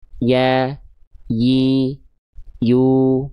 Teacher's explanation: huruf ya itu dilafalkan tengah lidahnya cukup diarahkan diangkat ke langit-langit